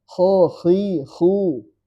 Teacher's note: Mau dia kasrah, fathah, domah tetap tebal. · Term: istila